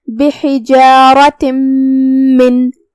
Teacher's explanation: یہاں حکم ہے ادغام بغنہ، جو کہ ادغام کا معنی ہے حرف کو حرف میں داخل کرنا، لہذا ہم یہ تنوین کو میم میں داخل کر کے غنہ کے ساتھ اور تشدید کے ساتھ یہ حکم کو ادا کریں گے